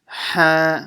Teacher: So I'll stretch it 6 harakahs long. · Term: Madd Lazim